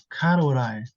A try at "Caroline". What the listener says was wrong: because uh the L Sound you pronounce it as r